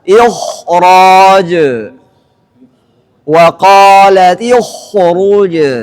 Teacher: Kemudian kalau ghain anidu. Kecuali setelah huruf kha sukun yang didahului kasrah tadi ada huruf ra, maka kha-nya kembali ketebalannya sebagaimana biasanya, sempurna lagi